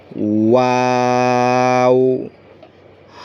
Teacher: ল, আইন, গইন, ফা, কফ, কাফ, লাম, মিম, নুন, ওয়াও। এই ওয়াওটা হবে দুই ঠোঁট গোল করে ওয়াও। আবার শেষের দিক দিয়ে গোলাকার করে ছেড়ে দেবেন।